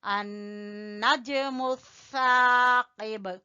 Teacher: نون جو ہے یہ کون سے حروف میں سے؟ حروف شمسی میں سے، تو اس میں لام نہیں پڑا جا رہا